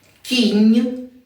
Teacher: приголосна в кінці значить м'який знак стоїть в кінці слова кінь стоїть в кінці слова і пом'якшує попередній н